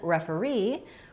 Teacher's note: referee um has the stress on the last syllable re, which means the first re sound uh is going to be short and reduced.